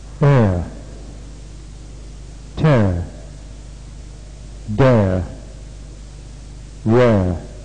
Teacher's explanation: part of this sound the joy doors are half open and the tongue raised a little in front near the position for the tongue then moves down slightly to